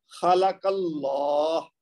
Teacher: یہ کاف کے اوپر زبر ہے نا جو، اس وجہ سے اللہ کا لام موٹا پڑا جائے گا